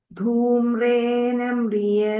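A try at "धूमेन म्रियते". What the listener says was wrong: No, Mataji, not Dhumra. Dhumena. Dhumena.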